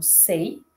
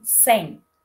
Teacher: O glide que ocorre na parte final do ditongo pode se iniciar em I ou U. Ditongos decrescentes em português podem ser orais, como sei, ou nasais, como em sem.